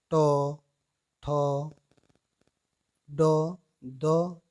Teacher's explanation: जो जीभ का जो अगला भाग है वो हमारे तालु का जो कठोर भाग है उसके पिछले हिस्से को स्पर्श करता है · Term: मूर्धन्य व्यंजन